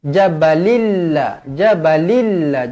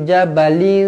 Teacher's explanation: idgham memasukkan la ghunnah tanpa dengung jadi bacanya Bacanya jabalillah jabalilla jangan baca Jabal Tak nak jabalilla